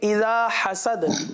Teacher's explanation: ہا کو واضح کریں گے اور دال پر قلقلہ کریں گے